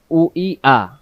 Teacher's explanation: হামজা অক্ষর হলকের প্রথম থেকে শক্ত করে পড়তে হয়। তাহলে দুই অক্ষরের মাখরাজ একই, উচ্চারণের স্থান একই, কোনো পার্থক্য নেই।